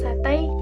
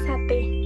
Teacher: Jika monovong yaitu perubahan dua bunyi vokal menjadi satu vokal tunggal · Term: monoftong